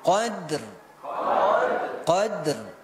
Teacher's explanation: huruf ro ini punya sifat namanya takrir takrirnya adalah di ujung lidah jadi Q jangan Fi lailatil Qadar W adrama lailatul qadar kita